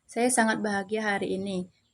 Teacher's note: terdengar seperti nada datar tanpa intonasi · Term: aprosodia